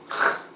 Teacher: in Spanish for G and for J the sound is right it's a rougher sound it's not H like H in English